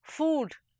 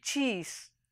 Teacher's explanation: when you say food your lips undergo rounding and when you say cheese your lips retract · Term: rounded